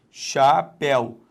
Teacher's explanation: Então a sílaba tônica é o zi. Repare, ainda que este ditongo aqui, ó, seja aberto, ele, por não estar na sílaba chamada tônica, ele não vai ser acentuado.